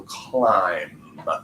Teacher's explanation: So even though that ends with a B, remember that B is silent there. So climb. Last thing I hear is that M sound. That's definitely with a vibration.